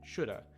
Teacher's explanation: to start from again so should have turns into shoulda and basically the have just turned to the uh sound at the end of should